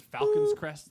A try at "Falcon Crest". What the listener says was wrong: There's no S. There's no S. It's Falcon Crest.